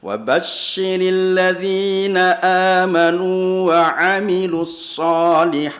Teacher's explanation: mad tabi'i bertemu dengan huruf yang disukunkan karena wakaf. Jadi bacaannya bisa panjang sekali sekuat nafas kita. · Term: arid li sukun